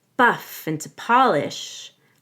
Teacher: I come up a little at the end of Polish to show that I'm not done with the sentence